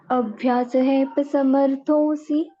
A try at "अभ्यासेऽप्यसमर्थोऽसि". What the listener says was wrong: अभ्यासेप्य समर्थोऽसि। माता जी से के बाद ना ह का उच्चारण कर रहे हो आप, सेहेप नहीं है, ह नहीं है कहीं पर भी। अभ्यासेप्य समर्थोऽसि।